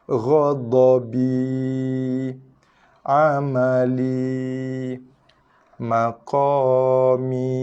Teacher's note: Huruf jauf alif, huruf jauf ya. Huruf jauf alif dua harakat, jauf ya pun dua harakat.